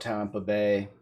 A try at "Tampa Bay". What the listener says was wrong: It almost sounded like you said Tampa Bay, like Tom. It almost sounded like you said Tampa though, like you were putting Tom's name in there. It's like you're putting Tom's name in there.